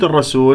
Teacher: في كلمة الرسول، بما أنه الراء مفتوحة تكون مفخمة مشددة بالفتح، وجاء بعدها سين مرققة